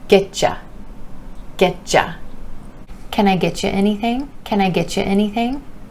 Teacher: The word you is reducing to ya, and that Y sound is changing to that the CH, like chips or chocolate.